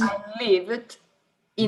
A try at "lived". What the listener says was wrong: Now livid. Careful. Lived. I lived in Portugal.